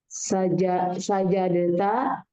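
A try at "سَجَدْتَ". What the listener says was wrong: Sajadta, nggak usah dikolkolahkan, nggak apa-apa. Sajadta.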